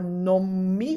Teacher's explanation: wrote uh for example the double m for nom me when the n becomes an m which is called assimilation